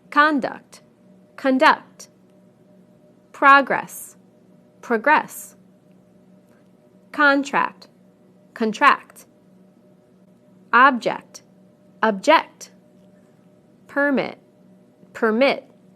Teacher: we stress the first syllable in the nouns and the second syllable in the verbs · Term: word stress